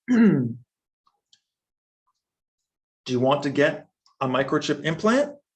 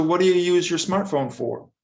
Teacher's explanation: So we have rising for yes, no, implant, and falling for information.